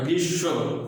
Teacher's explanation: শয়ের সাথে থাকে মফলা কিন্তু উচ্চারণে কিন্তু দ্বিত্ব হয়, অর্থাৎ শটা 2বার হয়